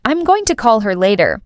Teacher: The stress usually falls on call and later. The other words slip by quietly.